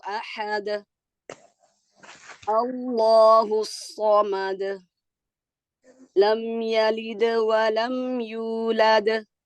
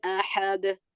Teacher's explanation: tadi di setiap akhir ayat beliau memantulkan ee huruf da